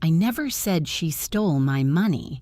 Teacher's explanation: I am emphasizing she. This implies maybe someone else stole it, not her. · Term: stress